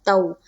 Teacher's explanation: واو لین کو ہم نرم آواز کے ساتھ جلد اور معروف پڑھتے ہیں